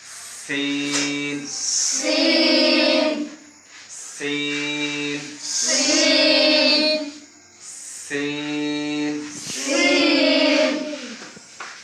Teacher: জিহ্বার আগা, সামনে নিচে দুই দাঁতের পেট ও আগার দিকে লাগাই